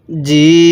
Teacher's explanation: জেরের পরে ইয়া সাকিন থাকলে কিভাবে পড়তে হবে? হ্যাঁ, জিম ইয়াজের জি, এক আলিফ টান হবে।